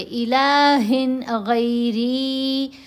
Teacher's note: را کے نیچے زیر، اس لیے باریک پڑھیں گے.